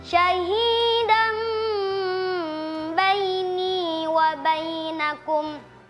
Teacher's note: Fathatain bertemu dengan huruf ba yang dibaca dengan mim. Nah, nusu hukumnya adalah ikhfa hakiki.